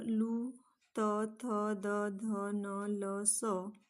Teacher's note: त्यानंतर लू, त, थ, द, ध, न, ल, स हे दंताला स्पर्श करत असल्यामुळे यांना दंत्य वर्ण असे म्हणतात